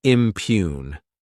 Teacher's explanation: this word has two syllables and the stress is on that second syllable.